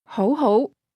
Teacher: Did you hear the two rising tones?